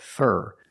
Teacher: Because for is not stressed in this expression, we pronounce it fur